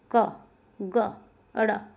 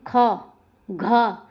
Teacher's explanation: जिसको बोलने में कम वायु बाहर निकले अल्प प्राण, और जिसको बोलने में ज्यादा वायु बाहर निकले वो होता है महाप्राण